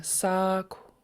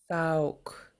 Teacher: you're basically breathing out the K with rounded lips, and it makes quite a different sound from if you don't round your lips.